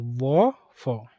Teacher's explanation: दंतोष्ठ निचले होंठों और ऊपर के दांतों से